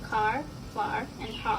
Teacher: The tongue height for this vowel is low, and the part of the tongue involved is the central part.